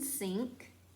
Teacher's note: N in front of K is pronounced ng, as in sink.